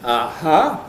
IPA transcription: ɑhɑ